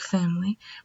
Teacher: by letter it sounds like w i or wire and then the unstressed eye is just going to be a very relaxed neutral vowel sound that's kind of sounds like an uh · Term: unstressed I